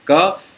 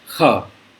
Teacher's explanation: ज़्यादा हवा के साथ, ज़्यादा हवा दे के क को बोलेंगे तो ख उच्चारण हो जाएगा